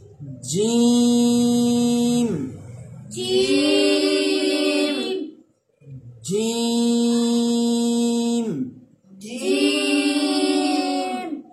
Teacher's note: زبان کا درمیان اور اوپر تالو کا درمیان جب یہ دونوں حصے آپس میں ملیں گے تو حرف جیم ادا ہوگا